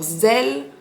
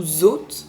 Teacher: le S en début de phrase et s'il est suivi d'une voyelle, comme dans par exemple Zikour, ou alors Zel, ou Zot, seront voisés. En fait, on pourrait les écrire avec un Z, puisque ce serait plus approprié à la prononciation.